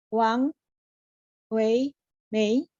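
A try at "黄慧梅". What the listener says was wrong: Huang Hui. Hui-nya tekan, yang lainnya benar. Huang Hui Mei.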